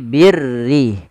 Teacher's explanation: huruf ra yang dibaca dengan tipis, yaitu ra tarqiq, yang dimana huruf ra-nya berharakat dengan berharakat kasrah.